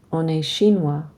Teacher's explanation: We can pronounce the N on because it's followed by a vowel, but we don't pronounce the T or the S on est, and we don't pronounce the S on chinois.